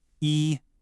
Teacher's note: The first character E is a high flat first tone.